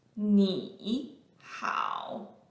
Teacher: Both words are the third tone, descending first, followed by ascending.